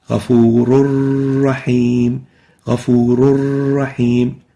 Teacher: No tanween, directly from the waw into the ra. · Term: idgham without gunna